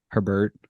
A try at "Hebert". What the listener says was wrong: It's not Herbert. There's no R except in the back, which was for like, the Bert.